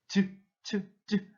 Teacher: 딱딱한 입천장과 혀의 앞부분이 붙었다 떨어지면서 나는 소리. 그래가지고 이 딱딱한 입천장을 한자로 경국의 음이라고 지읒계열의 소리는 말을 합니다.